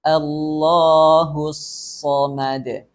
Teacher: So dalam keadaan fathah juga tebal.